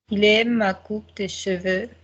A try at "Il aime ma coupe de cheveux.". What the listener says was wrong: Faster, don't spend time on de.